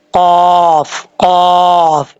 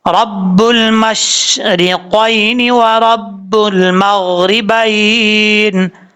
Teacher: 2 नुक्तों वाला काफ जो होता है हरूफ मुस्ताला में से है, और ये पुर पढ़ा जाता है